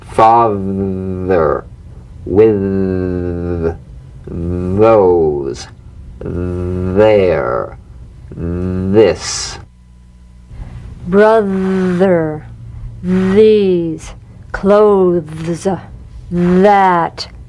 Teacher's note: vibration mmm-mmm-mmm feel that vibration on the tongue outside the teeth you've got to let the tip of the tongue stick outside the teeth and vibrate · the voiced tongue point to teeth fricative th · So slip the rim of the tongue between the teeth and sing, feeling a buzz or vibration. Feel that vibration on the tongue outside the teeth. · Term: voiced th